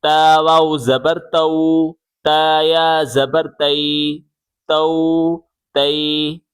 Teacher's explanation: کھینچنا نہیں ہے اور جھٹکا بھی نہیں دینا، مجہول بھی نہیں پڑھنا، معروف پڑھنا ہے، نرمی سے